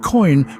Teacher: the word word coin contains the dip thong o i where the sound starts at the O and Glides towards the I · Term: diphthong OI